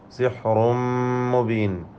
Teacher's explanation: തൻവീനിനെ ഇദ്ഗാം ബിഗുന്ന കാമിൽ നൽകി മണിച്ചുകൊണ്ട് ഉച്ചരിക്കണം.